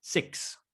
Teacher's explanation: La X se pronuncia igual que en español. Es como si nosotros hiciéramos una K con una S.